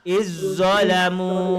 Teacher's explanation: Za hilang, bukan izzo, tapi terus izzalamu masuk ke maruk zo. Zal itu hilang terus lah